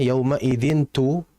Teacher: Maka ketika bertemu huruf ta di antaranya maka ini harus dibaca ikhfa. Kalau kita istilahkan dengan eng gitu ya, baca dengan eng samar